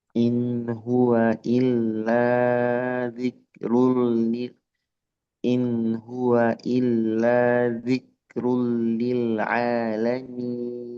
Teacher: In hua izhar halqi. Jelas setengah mengalir.